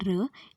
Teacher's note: तो आप लोग बोल के देखिए र, इसे प्रोड्यूस करते समय टिप ऑफ टंग टच करती है पोस्ट एल्वियोलर रिज को, मीन्स जहाँ पर एल्वियोलर रिज खत्म होती है उस एरिया को टच करती है tip of the tongue, hence r is post-alveolar voiced frictionless continuant